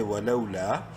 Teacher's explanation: ہے لام کو شارٹلی پڑھیں گے ولو لام الف زبر لا الف مدہ ہے لام کو ایک الف برابر لمبا کریں گے